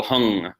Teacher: it's actually not an ng that is a oversimplification for the sake of pedagogy it's really this pure nasal sound but you still hear in it some Indian languages by the